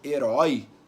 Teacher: por que eu digo que herói é um ditongo aberto? Porque o som do O é um som aberto.